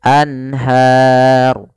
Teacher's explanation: Kemudian pada lafal anharu di sini ada bacaan izhar halqi, yaitu adanya nun sukun bertemu dengan huruf ha, yaitu suara nunnya harus jelas, tidak boleh ditahan.